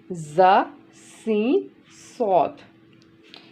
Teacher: ये जब तीनों अदा करते हैं तो सीटी की आवाज़ आती है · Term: हरफ़े सफ़ीरिया